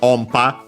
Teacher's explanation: the n, when followed by p, becomes m, like in English